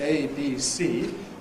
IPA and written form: eɪ biː siː (ABC)